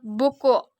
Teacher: bunyi uh dengan ciri-ciri tinggi belakang bulat